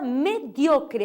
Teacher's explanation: Aí tem a palavra mediocre, a sílaba tônica é dio